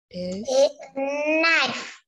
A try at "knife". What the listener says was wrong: Rồi con đọc ngắn lại tí. con không cần đọc chữ ca nha, mình đọc chữ knife.